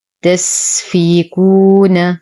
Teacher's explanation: نعطي السين الهمسة والرخاوة، نتم كسرة الفاء، نتم ضمة الكاف بعدها واو ساكنة فهما الطبيعي بمقدار حركتين وصلا.